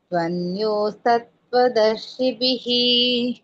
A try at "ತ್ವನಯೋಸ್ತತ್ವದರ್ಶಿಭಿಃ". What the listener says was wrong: ಅಲ್ಲಿ ತ್ವನ್ಯೋ ಅಂತ ಹೇಳ್ಬೇಡಿ, ತು ಅನಯೋಹೋ ಬರುತ್ತೆ. ಹಾಗಾಗಿ ತ್ವನ್ಯ ಅಂತಂದ್ರೆ ತಪ್ಪಾಗುತ್ತೆ, ಅದು ಮತ್ತೆ ಬೇರೆ ಅರ್ಥ ಕೊಡುತ್ತೆ. ತ್ವನಯೋಸ್ ತತ್ವದರ್ಶಿಭಿ ಅಂತ ಹೇಳಿ, ಇಲ್ಲಾಂದ್ರೆ ತು ಅನಯೋಹೋ ತತ್ವದರ್ಶಿಭಿ ಅಂತ ಹೇಳ್ಬೋದು.